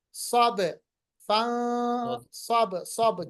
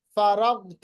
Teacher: गैन पे कलकला नहीं होता, गैन पे आवाज रोकनी है। फ़इज़ा फ़रग़्त फ़ंसब, बा पे कलकला होगा।